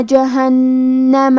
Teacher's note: کلمت جہنمہ میں نون پہ تشدید ہے، تو ہمیں 2 حرف کے برابر نون کو پڑھنا ہے، آخری میں میم کے زبر کو ظاہر کریں گے۔